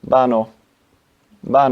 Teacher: Spanish has a characteristic of pronouncing a V as a B